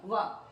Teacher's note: ದಂತೋಷ್ಠ್ಯ ಇಲ್ಲಿ ತುಟಿನು ಮುಖ್ಯ ಹಲ್ಲು ಮುಖ್ಯ